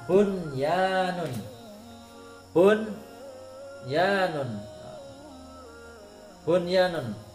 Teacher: ini nun sukun bertemu dengan ya, tapi ini dalam satu kalimat tidak boleh dibaca buyanun, tidak boleh. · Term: idhar wajib